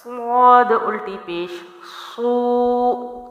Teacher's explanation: صاد کی سٹارٹ جو موٹا ہے اس کے بعد اس کی مد کی لمبائی کو باریک ادا کریں گے